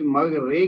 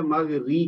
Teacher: زیر ہے نا اس کو ای کی آواز نکالیں، اے کی بجائے